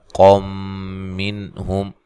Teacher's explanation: یہاں نون تنوین کا ادغام مع الغنہ ہے۔